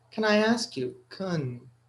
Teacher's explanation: So can, when it's not stressed, it's pronounced kun.